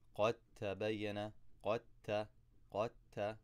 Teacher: And I know that these letters are al-mutajanisan. The dal and the ta come from the same exact spot in my mouth. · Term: idgham